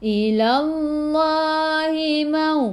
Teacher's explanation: waw ada sukun sebelum waw baris atas, bacaan lin, bacaannya lembut.